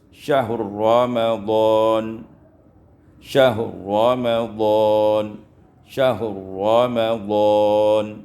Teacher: diidghamkan ra pada ra dengan idgham kamil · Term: idghamur ra fil ra